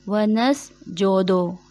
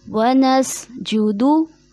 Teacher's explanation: जीम पेश जो दाल पेश दो जो कि गलत अदायगी है, जीम पेश जू होता है, दाल पेश दू होता है।